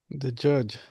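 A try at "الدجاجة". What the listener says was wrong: The judge. Are you sure? Is the judge? But what do we establish? Ad-dajajatu. Right? You gotta say the ta at the end. Ad-dajajatu. Dajajatu.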